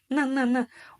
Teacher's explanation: Вот прям попробуйте во рту потянуться языком сейчас к верхнему небу. Сначала произнеся обычную букву «Н», на, у нас язык упирается в верхние зубы.